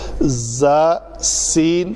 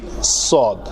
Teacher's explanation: زا اور سین جو ہے وہ پتلے حروف میں سے ہے اور صاد جو ہے وہ موٹے حروف میں سے ہے